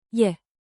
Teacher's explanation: With rising intonation, think 2 ascending notes.